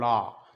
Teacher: ला में क्या है, दोनों किनारों से हवा ध्वनि निकल जाती है, हवा निकल जाती है दोनों साइडों से, तो वहाँ होता है आपका पार्श्विक, और पार्श्विक होता है हमारा ला।